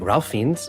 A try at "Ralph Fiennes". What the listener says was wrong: Rafe Fiennes. His name is Ralph, but he pronounces it Rafe.